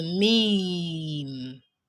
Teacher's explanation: characterized by the lips closing plus air and sound coming from the nasal passage. So when you're pronouncing your letter meme, your lips would close at the end of the pronunciation, but at the beginning, your lips won't be closed, and then you would have to release a.